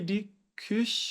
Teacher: a gente faz a boca do u e pronuncia algo como se fosse o i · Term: u com trema